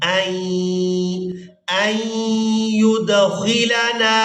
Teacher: اب یہاں پر ہم نے حمزہ کو یا مشدد کے ساتھ ملانا ہے، نون ساکن کو ہم چھوڑ دیں گے۔